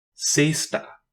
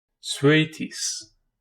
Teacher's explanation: It represents an unvoiced sibilant alveolar fricative